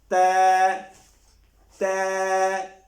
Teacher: ثنایا علیہ کے اندر کے کنارے اور زبان کی نوک سے